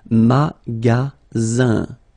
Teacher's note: the ending here is IN, so it's nasal, it goes in your nose, and it's un.